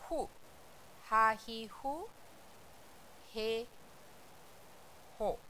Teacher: अब ये थोड़ा सा बोलने में अलग है, हा ही हु नहीं है, फू है। जैसे आप फूकते हैं उस तरीके से आवाज़ निकालिए